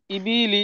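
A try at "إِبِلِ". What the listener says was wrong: বা টান হয়ে যাচ্ছে। ইবিলি, এরকম বলছেন আপনি।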